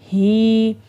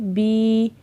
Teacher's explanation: اب کھڑی زیر کو ہم نے 2 یا کے برابر لمبا کرنا ہے، اور واو الٹا پیش وو، اور واو کو ہم نے الٹا پیش کو ہم نے 2 واو کے برابر لمبا کرنا ہے۔